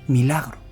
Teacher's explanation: Además, con una entonación, con una con una voz, vamos a decir, como no débil, pero sí casi susurrando